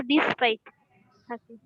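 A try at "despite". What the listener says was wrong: আচ্ছা, উচ্চারণটা সুন্দর করে করবা, ডিসপাইট না ডেসপাইট।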